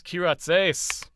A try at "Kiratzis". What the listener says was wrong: Kiratzis. It's an is at the end. Just if you look at the word and pronounce it with an English or American accent, it actually comes out fairly normal.